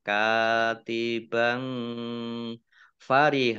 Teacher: fathah tanwin bertemu dengan huruf Fa dibaca samar-samar